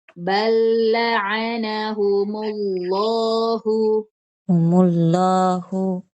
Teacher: lafzul jalalanya, lamnya diisti'lakan, diangkat jadi terdengar tebal.